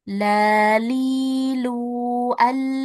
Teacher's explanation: Ya, tetap keluar, enggak tertutup suaranya, pasti tetap bisa keluar seperti huruf lam. Huruf lam kan dia tidak dengung atau tidak ghunnah.